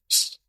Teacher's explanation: You should keep your tongue higher for sh. Like you'll feel your tongue higher in your mouth.